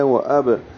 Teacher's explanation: واو ہونٹوں کی گلائی سے با ساکن پہ قلقلہ ہے